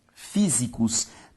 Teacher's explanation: Físicos também tem como sílaba tônica a antepenúltima, logo uma palavra proparoxítona.